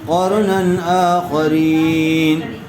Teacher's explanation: تنوین کے بعد حروف حلقی میں سے حمزہ آیا ہوا ہے، اس لیے بغیر غنّے کے جلد اظہار کر کے پڑھیں گے